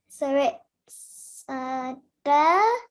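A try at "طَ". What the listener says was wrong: Try to pronounce it with your mouth rounded a bit. To. To.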